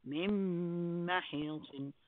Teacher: Noon is replaced with a meme here.